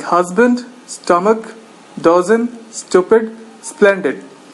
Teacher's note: stress falls on the first syllable